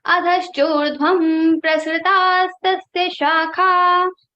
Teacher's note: So fifth letter of pa varga is ma. So the Anuswara sound will be like ma. So in the place of Anuswara, we have to put ma and we have to say adhaschordhvam prasritastasya shakha.